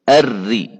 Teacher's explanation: direct पूरी मुशद्दद रा को हम बारीक पढ़ेंगे